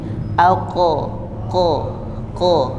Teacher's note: pangkal lidah yang naik ke atas sampai menempel. Naikkan pangkal lidah sampai menempel ke atas.